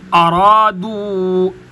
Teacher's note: ارادو دال کے آگے واو کے اوپر مد ہے تو یہ مد چھوٹی مد کہلاتی ہے. اس کو 3 الف کی مقدار میں لمبا کیا جاتا ہے. ارادو یعنی جتنے دیر کے اندر 3 دفعہ الف الف الف پڑھا جاتا ہے اتنا وقت اس مد کو لمبا کرنے میں لگنا چاہیے.